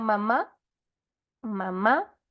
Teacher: fíjense que el aire Sale netamente por la nariz